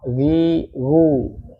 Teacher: Dia sama dengan kha, makhrajnya kha, cuman nggak nyampe ngorok ya, nggak nyampe kha nggak kha gitu. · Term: ghain